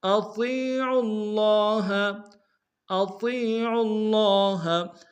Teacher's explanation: آمنوا اطیعوا اللہ، اطیعوا اللہ، اطیع میں حمزہ کو نم سے ادا کریں گے، طا کو یا کے سامنے لیں گے، یا مدہ کے انداز میں کھینچیں گے، طا کو موٹا ادا کریں گے، عین کو لفظ اللہ کے لام کے سامنے لانا، تشدید زور دیں گے، اگر لام کے اوپر کھڑا زبر ہے ایک انداز میں کھینچیں گے۔